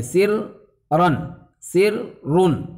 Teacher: اگر اس کو الگ الگ آپ پڑھیں گے، سر رن، سر رن الگ الگ، تو یہاں فک ادغام ہو جائے گا، یعنی تشدید باقی ہی نہیں رہے گی